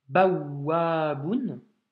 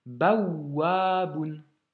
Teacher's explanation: le waouh possède une shedda, donc on doit insister, appuyer, donc doubler cette consonne finalement, et elle est suivie de la voyelle A.